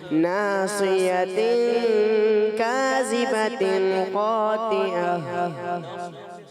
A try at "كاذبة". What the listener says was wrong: نے پر کرنا ہے کاذبہ میں ذال کے دے. دوبارہ اس کو کریں.